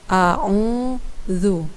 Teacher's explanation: a'udzu karena ini adalah huruf z ya dan makhraj huruf file adalah ujung lidah yang dikeluarkan sedikit dan bertemu dengan ujung gigi depan bagian atas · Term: huruf zal